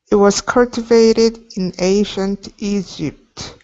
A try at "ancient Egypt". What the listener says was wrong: Push your lips out a little bit more. Don't let your lips hang back. In ancient Egypt. So just remember, your lips need to come out. If your lips stay back, okay, it's not going to sound right.